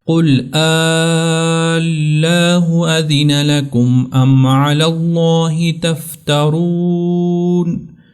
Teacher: قل اللہ، اور دوسری بات کا آپ نے یہ خیال رکھنا ہے کہ لام کے اوپر شد بھی ہو، یعنی لام کو سختی کے ساتھ ادا کریں، دبا کر ادا کریں، لاہ لمبا بھی کرنا ہے